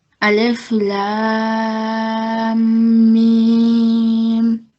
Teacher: you're joining your lam to your mim, but you're saying both letters for 4 seconds each